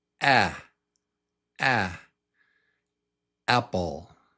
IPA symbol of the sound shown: æ